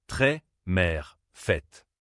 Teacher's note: C'est une voyelle ouverte, plus détendue. La bouche s'ouvre un peu plus